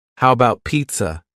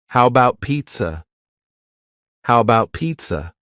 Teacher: first a in the word about is gone. It's just missing.